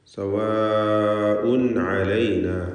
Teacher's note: ഇദ്ഹാർ ഹൽഖി നൽകി തൻവീനിനെ വെളിവാക്കേണ്ടതാണ്. അല്പം പോലും മണിക്കാതെ വ്യക്തമാക്കി ഉച്ചരിക്കണം